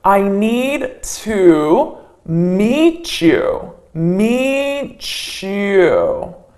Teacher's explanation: here I have a T and A Y side by side so I can say I need to meet you meet you so I'm adding that CH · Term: CH sound